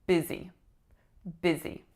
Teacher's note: A lax I followed by a tense E.